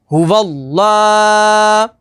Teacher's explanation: اس میں جلالت اللہ عز و جل کے لام سے پہلے زبر آ جائے تو اس میں جلالت اللہ عز و جل کے لام کو پر یعنی موٹا پڑھیں گے، اور لام کے اوپر تشدید ہے تو تشدید والے حرف کو 2 دفعہ پڑھیں گے، اور لام کے اوپر کھڑی حرکات ہے تو کھڑی حرکات کو حروف مدہ کی طرح لمبا کر کے پڑھیں گے۔